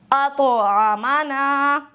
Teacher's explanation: کیسا ہوگا، اطعمنا، اطعمنا نہیں کرنا ہے اور طا کو موٹا بھی کرنا ہے کیونکہ استعلاء کی صفت ہے